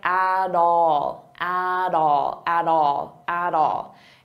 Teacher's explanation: I'll pronounce that T as a soft D, and it sounds like at all, at all, at all, at all.